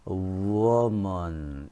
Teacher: 이 W가 G로서 발음이 됩니다.